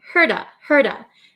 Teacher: The T becomes a flap T, so it sounds like a soft D sound.